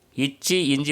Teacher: இச்சி இஞ்சி பார்த்திங்கன்னா நாவின் இடைப்பகுதி, அன்னத்தின் இடைப்பகுதி. இச்சி இஞ்சி வந்து நாவின் இடைப்பகுதி, நடு அன்னத்தின் இடைப்பகுதி.